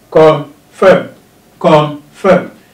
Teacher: Confirm has two syllables as well. Confirm. Confirm. And the stress must be on the last syllable of the stem.